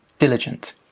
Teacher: where's the stress? Diligent. It's on the first syllable, diligent. Diligent students tend to do better in exams than those that try and cram last minute.